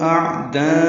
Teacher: عین ساکن وسط حلق سے ادا ہوگا اور اس پہ اظہار ہوگا